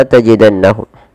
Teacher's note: perlu ditahan suara bunyi nunnya jangan jangan langsung dilepas Contohnya seperti apa misalkan langsung dilepas Padahal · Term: gunah